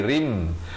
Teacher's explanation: Masuk berserta dengung dua harakat. Wa qasrin asalnya ra tanwin di bawah bunyi rin, tapi datang mim jadi rim